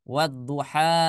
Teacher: jangan lagi dibaca wal duha, tapi langsung masuk melebur, ya, memasukkan ke dalam huruf huruf dhad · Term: idgham syamsiyah